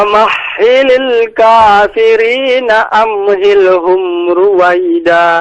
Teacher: famahhilil dengan ha ya, yang dari pangkal tenggorokan. Famahhilil bukan dari tengah.